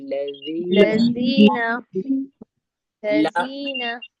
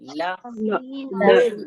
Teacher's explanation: ला जब हम निकालेंगे तो जबान हमारी तालू से लगेगी, ला।